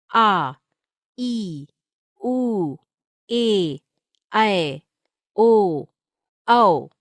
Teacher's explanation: ख दीर्घ स्वर, इनके उच्चारण में ह्रस्व स्वरों से 2 गुना समय लगता है।